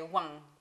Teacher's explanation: The ng, sound is more prevalent in Chinese. So if I'm saying number one, a Chinese speaker might say wang.